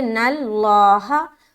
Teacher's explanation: اب لفظ اللہ آ گیا تو یہ جو لام ہے لفظ اللہ کا، اسے موٹا کرنا ہے کیونکہ نون کے اوپر زبر ہے. اگر نون کے نیچے زیر ہوتا تو باریک کرتے، اگر پیش ہوتا تو بھی موٹا کرتے.